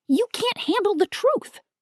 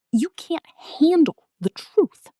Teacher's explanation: the stress is on handle and truth. Those are the key words.